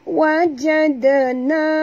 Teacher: Dan pastikan huruf dal ni kita sentilkan lidah kita. Kerana makhraj dal sama dengan zal di hujung lidah.